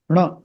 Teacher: That is a retroflex sound where you have to twist your tongue upward.